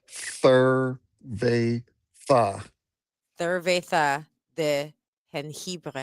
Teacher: Those are two S sounds. Both of those S sounds, they made a lisp.